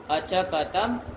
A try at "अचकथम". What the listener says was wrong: कथम, था क्यों बोलना नहीं आता तुमको?